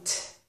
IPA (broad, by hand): t